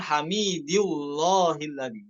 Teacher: Allahnya bukan dibaca tafkhim, namun tarqiq pada lam lafzul jalalah